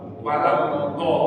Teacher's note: Kalau walat do berarti makhraj do-nya pasti salah, karena makhraj do ini tepi lidah menyentuh gigi geraham atas, maju ke depan. Ya, setelah di sini walat do, walat tadi itu nggak lama Pak terjadinya.